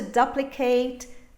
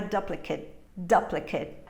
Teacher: the ending of the word is short it's reduced